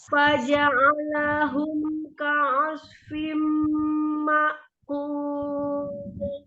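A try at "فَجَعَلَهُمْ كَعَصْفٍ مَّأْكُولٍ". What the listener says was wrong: Ya, sofirkan sodnya, ainnya tidak ditebalkan. Faja'alahum ka'asfim ma'kul. Ka'asfim.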